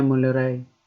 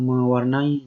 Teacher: Fonem N hilang pada morfem menasal dan penasal. Akibat bertemu dengan bentuk dasar yang berawalan fonem L, R, Y, W, dan nasal. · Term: penghilangan fonem